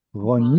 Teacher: Kamatz katan, which is an O vowel, shows up in a closed and unstressed syllable.